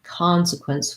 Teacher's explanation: We have first syllable stress. C-O-N in the beginning of words when it's stressed often says the ah vowel, con.